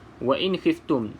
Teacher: Okey, nun ataupun mim ada tanda mati, tak perlu fikir panjang, bermaksud bacaan di sini adalah bacaan izhar, iaitu bacaan yang jelas. Maka bila kita sebut jelas ataupun bacaan izhar, bermaksud tidak boleh didengungkan sama sekali.